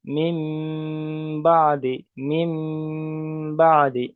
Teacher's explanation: নুন সাকিনের পরে বা এসছে, তাই এখানে ইকলাবের কায়দা নুন সাকিনকে মিমের দ্বারাই পরিবর্তন করতে হবে, তাই নুন সাকিনটার আওয়াজ আসবে না।